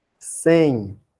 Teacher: O M, eu estou lendo como se fosse I, né não?